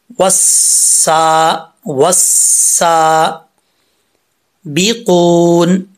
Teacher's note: वाव को जब सीन से कनेक्ट करेंगे तो बीच में अलिफ और लाम गिर जाएगा। सीन उसमें से हुरूफ सफ़ीरिया में से है तो सीटी के साथ पढ़ा जाएगा, लेकिन बरीक पढ़ेंगे, पुर नहीं पढ़ेंगे। ठीक है, सीन के ऊपर खड़ा ज़बर है, एक अलिफ की मिकदार, इसको लंबा करेंगे।